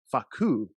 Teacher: I've never heard anybody pronounce the emphasis on the second syllable